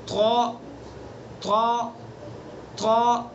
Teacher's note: طا زبان کی نوک ثنا علیہ کی جڑ. تا دال طا تینوں کا مخرج ایک ہے، بس اس کو پر پڑھیں گے